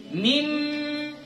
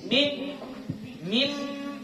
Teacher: kalau kita tutup hidung mati suaranya. Itu tandanya dia dari hidung. Kalau dari mulut kita tutup hidung ini dia tetap bunyi. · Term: gunnah